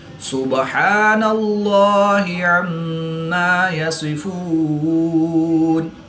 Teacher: لام سے پہلے نون پر زبر ہے تو یہاں پر اس لام کو پر یعنی موٹا پڑھیں گے۔